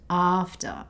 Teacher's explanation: It has the 'ah' sound at the beginning and the schwa sound at the end.